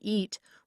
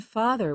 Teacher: the vowel E, as in eat, where the tongue is high and forward, and the vowel ah, as in father, where the tongue is low and flat